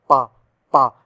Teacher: पा पा पा में दोनों होठ जुड़ रहे हैं तो होठ लगा दिया।